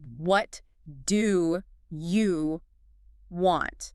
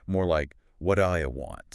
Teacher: The T in what sort of blends into the D in do.